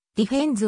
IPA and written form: diˈfens (defense)